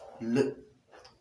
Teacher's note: The L sound, the lateral sound. The moment you pronounce the lateral sound L, you realize that the tip of the tongue is in contact with the alveolar ridge